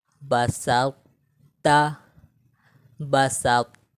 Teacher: ذیل کے کلمات میں طا کا تا میں ادغام ہوا ہے. طا کی موٹائی کو برقرار رکھتے ہوئے تا پڑھیں گے. طا میں قلقلہ اور سکتہ بھی نہیں ہوگا. · موٹائی کو برقرار رکھتے ہوئے طا میں ہم قلقلہ بھی نہیں کریں گے. ٹھیک ہے، طا میں ہم قلقلہ بھی نہیں کریں گے لیکن طا کو موٹا بھی پڑھیں گے اور تا کو باریک پڑھیں گے